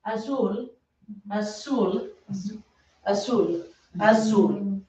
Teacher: The other thing, the other letter, Z's and S's, is not really a problem, but they just have the same sound. There is not a Z sound in Espanol. It's a S sound.